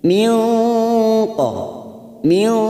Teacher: kita samarkan bunyi nun sukun, siap masuk pada huruf qaf. Maka cara menyamarkannya, bibir kita siap-siap membunyikan huruf qaf. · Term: ikhfa hakiki